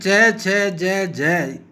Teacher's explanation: इसमें स्पर्श और संघर्ष दोनों विशेषताए मिलती है प्रारंभ स्पर्श से होता है और बाद में वायु संघर्ष करती हुई मुख र से बाहर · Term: स्पर्श संघर्षी